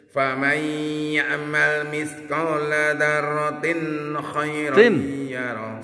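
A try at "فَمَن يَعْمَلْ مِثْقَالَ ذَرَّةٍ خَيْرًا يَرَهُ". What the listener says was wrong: Jangan didengungkan. khairan yarah. R-nya dua.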